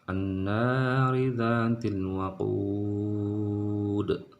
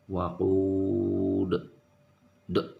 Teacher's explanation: kalau dia huruf qalqalahnya ada di akhir kalimat seperti ini, pengucapan qalqalahnya itu harus lebih jelas. Waqud, d ada d-nya ya.